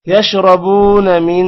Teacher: یشربون را موٹا ہوگا، با کے بعد واو ہے لمبا کریں گے، نا کو لمبا نہیں کرنا.